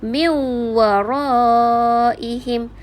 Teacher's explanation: Nun sakinah tu terus masuk bunyinya ke dalam huruf waw. Seolah-olah dah tak berbunyi nun tu. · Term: idgham ma'al gunnah